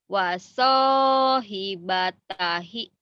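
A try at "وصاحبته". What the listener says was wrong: Ibatahi, jangan ibatahi, ibatihi.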